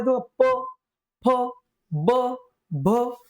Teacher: आहे तो म्हणजे ओठ आणि ओठ या ठिकाणी येतात आपले ओष्ट्य ओष्ट्य वर्णन उच्चारत असताना वापर होतो ओठाचा